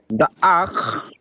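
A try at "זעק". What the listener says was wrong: Careful with that first letter. What is that first letter? Za'ak.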